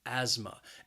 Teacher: has two syllables and the stress is on that first syllable that second syllable has that schwa again that uh sound